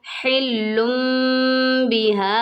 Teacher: यहाँ पर खड़ी ज़बर है, खड़ी ज़बर को एक अलिफ की मिकदार के बराबर खींच के पढ़ते हैं